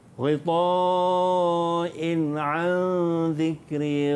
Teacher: In 'an juga izhar halqi juga tak boleh dengung.